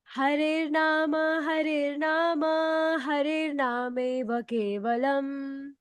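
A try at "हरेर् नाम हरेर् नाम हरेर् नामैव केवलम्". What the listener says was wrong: You changed the tone. Please repeat the same tone. Harer Nama, Harer Nama, Harer Nameva Kevalam.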